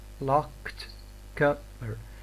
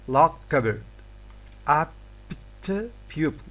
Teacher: in English, one may have a sequence of 3 stops, and when this happens, the middle one is doubly incomplete.